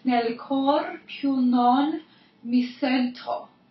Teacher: So nel cor, you want to make sure you roll your R's.